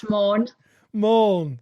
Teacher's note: It's my flat Manchester vowels, you see.